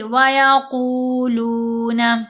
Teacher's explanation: تو یہ واو مدہ دونوں طرف آ رہی ہے. قاف کو بھی 2 حرکات کی مقدار لمبا کریں گے، لام کو بھی 2 حرکات کی مقدار لمبا کریں گے، تو آواز بنے گی وَيَقُولُونَ.